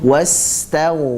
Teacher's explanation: Sinnya mengalir, kemudian ghainnya pun mengalir dan dalam keadaan tebal.